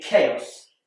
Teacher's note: And CH is more commonly pronounced ch, like in church. But in chaos, it's a k, like in cat.